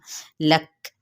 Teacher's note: ज़बर को क्या करेंगे, लंबा नहीं करेंगे। लक यहाँ काप पे जब साकिन करेंगे तो इस पर हम्स होगा, यानी सांस के साथ आवाज़ का जारी रहना